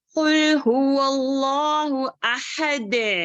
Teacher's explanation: اللہ کو لفظ جلالہ کو جو ہے موٹا کر کے پڑھیں گے